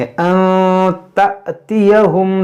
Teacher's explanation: यहाँ पर देखें इख्फ़ा होगा, यहाँ पर जो अलिफ के ऊपर जज़्म है, जो ये हमज़ा है और हमज़ा साकिना है, तो इसको झटका देकर पढ़ेंगे